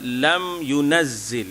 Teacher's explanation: Itu tak payah didengungkan mim mati tu. Mim mati berjumpa dengan ya, tak ada, itu hanyalah izhar sahaja